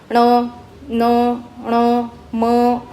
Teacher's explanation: न ण म याचा उच्चार नाकातून होतो म्हणून त्यांना नासिक्य अस म्हणतात